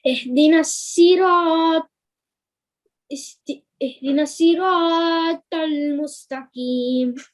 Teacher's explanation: And the ra as well, it's also a tafkhim ra, so thick ra.